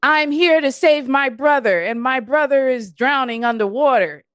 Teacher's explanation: Because the way a lot of those lines are delivered, they're delivered with no intonation in the voice, no undulation of the vowels or anything